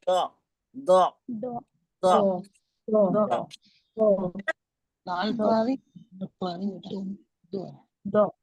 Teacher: हमारी जबान को हमें टच करना है बाई तरफ की दाढ़ों के मसूड़ों से और फिर हम निकालेंगे द द दो और जबान की आगे वाली नोक ऊपर की जड़ों में भी टच हो रही है